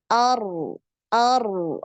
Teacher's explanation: berharakat fathah ataupun dah maka dia dibaca tebal ar ar ah naik ya pangkal lidahnya naik